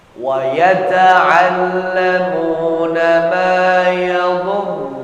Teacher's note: Karena bukan kasrah ra-nya, maka kita baca tebal.